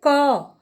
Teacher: जैसे हम क का उच्चारण करते हैं तो क अंत में अ की ध्वनि निकलती है